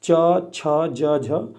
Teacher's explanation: च वर्ग के सभी व्यंजनों को हम तालु से बोलते हैं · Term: तालव्य